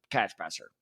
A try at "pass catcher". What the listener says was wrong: Did you say pass catcher? It did not sound like that. It sounded like you reversed it. It was very weird.